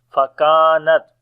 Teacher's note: Kaf we read in light sound and also we long due to alif madda. On the ta we make hams quality, the continuation of our breath.